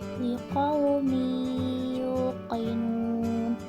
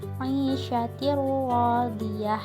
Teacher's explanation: Hukum bacaan ini terbagi menjadi dua bagian, yaitu yang pertama idgham bigunnah, dengung, yang terjadi bila nun mati atau tanwin bertemu huruf-huruf seperti mim, nun, waw, dan ya, maka harus dibaca lebur dengan dengung